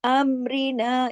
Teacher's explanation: अमरीना, यहाँ पे रा बारीक पढ़ा जाएगा, क्योंकि रा पे रा के नीचे जेर है